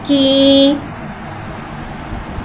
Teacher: खड़ी ज़ेर को एक अलिफ़नी 2 हरकत के बराबर खींच के पढ़ेंगे और खड़ी ज़ेर को नीचे गिराते हुए अदा करके पढ़ेंगे।